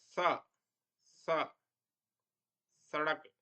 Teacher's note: दंत्य सकार के उच्चारण में जिह्वा दांतों पे जाके लगती है · स का उच्चारण दांतों में जिह्वा लगाकर किया जाता है, इसलिए इसे दंत्य सकार भी कहा जाता है।